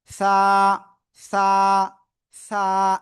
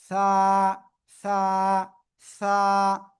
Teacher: ওই একই জায়গা, কিন্তু এবার আগা, জিহ্বার আগা, উপরের 2 দাঁতের আগায়, আগায় লাগিয়ে আমরা উচ্চারণ করব।